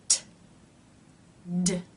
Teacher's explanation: The tongue will come up, and the front part will touch the roof of the mouth just behind the top teeth. It will then pull down to release the air. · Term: stop consonants